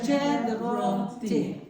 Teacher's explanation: You're not saying explosive T. You're saying more of a the.